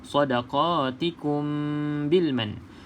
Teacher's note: Cumanya kita kena rapatkan bibir atas dan bibir bawah ketika sebut huruf mim ni lah. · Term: ikhfa syafawi